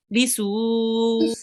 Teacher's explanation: Make sure to prolong the su, because there is a extra long stretch here.